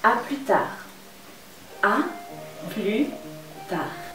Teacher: ¿Ves cómo la S enmudece cuando dices a plus tard?